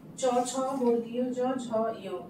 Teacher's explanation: এগুলি উচ্চারণের সময় জিহ্বার মধ্যভাগ দ্বারা তালুর কঠিন অংশ স্পর্শ করে। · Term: তালব্য বর্ণ